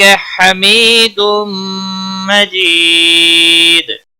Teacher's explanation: تنوین کے بعد حروف یرملون کا میم آیا ہے ادغام با غنہ ہوگا